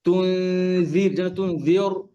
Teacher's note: এখানে জেরের পরে কাসরার পরে র সুকুন, র পাতলা।